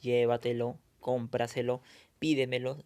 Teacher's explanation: lleva la mayor fuerza de voz en la antepenúltima sílaba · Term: sobreesdrújulas